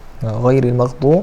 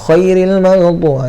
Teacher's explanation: Khairil maghdu, itu kha salah. Ghain ni dia mesti ada macam getaran sikit. Rasa orang kata apa ni, kita getak sikit di orang kata di kerongkong ni, rasa ada getaran sikit. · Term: huruf ghain